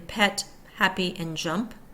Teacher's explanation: Consonant sounds of Canadian English. P, P, unvoiced. Closed lips stop the airflow, releasing it through mouth.